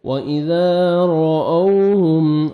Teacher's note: کو موٹا کر کے پڑھیں گے، را او، واو لین ہے، رأوہم میم ساکن کا اظہار ہے، جلدی پڑھیں گے ، وَإِذَا رَأَوْهُمْ را موٹا کر کے پڑھنا ہے را کو